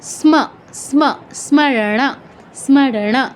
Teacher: দন্তস্ব অর্ধেক আছে, তো দন্তস্ব আমরা জাস্ট টাচ করে ময়ের পূর্ণ উচ্চারণ করতে হবে